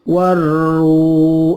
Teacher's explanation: Waru, ini al-ta'rif ketemu ro, namanya al-syamsiyah, alnya tidak jelas, tidak terbaca, langsung ke ro. Waru, ru, ini mad tobi'i atau mad asli, dipanjangkan 2 ketuk.